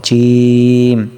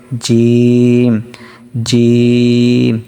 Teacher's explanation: জিহ্বার মধ্যখান তার বরাবর উপরের তালুর সঙ্গে লাগিয়ে জিম শিন ইয়া উচ্চারিত হয়।